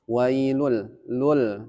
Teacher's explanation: Idgam bilagunah masuk tapi tidak dengung